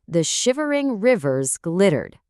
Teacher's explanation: Notice how those shh, vv, and r sounds are all so soft and continuous. This creates a smooth, almost like liquid feeling that perfectly matches the image of a glittering river.